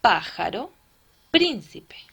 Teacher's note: se acentúan en la antepenúltima sílaba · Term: esdrújulas